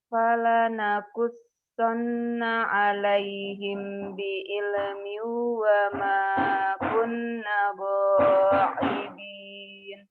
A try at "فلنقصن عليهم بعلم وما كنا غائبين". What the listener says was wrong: Panjang. Wa ma kunna. Ulang.